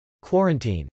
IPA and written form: kwˈɔːrənt.in (quarantine)